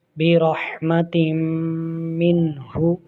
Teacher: تم تا کے پاس تنوین ہے، میم حرف یرملون ادغام ہو رہا ہے غنہ کے ساتھ